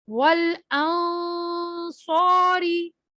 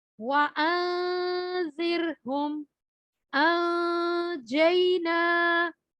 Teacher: اس میں پہلا اخفا موٹا تھا اور باقی دو باریک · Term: موٹا اخفا